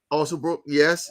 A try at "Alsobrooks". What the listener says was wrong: also Brooks, not Brooke.